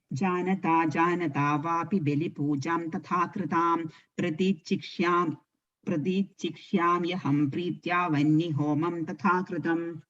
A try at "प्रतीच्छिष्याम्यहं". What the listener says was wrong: Even that you're saying chick, that chick you're saying this ik sound coming. There's no ik, just chish.